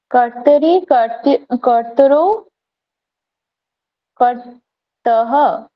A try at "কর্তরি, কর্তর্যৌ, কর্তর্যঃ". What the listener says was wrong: এখানে র জফলা হচ্ছে, তাই না? রেফ হবে, রেফ জফলা। কর্তরি, কর্তর্যৌ, কর্তর্যঃ।